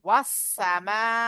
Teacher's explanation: জিভের আগা, সামনের, উপরের ও নিচের চার দাঁতের আগার সাথে লাগিয়ে উচ্চারিত হয় সিন।